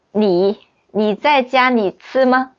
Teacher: when they speak Mandarin, they don't care about the n and l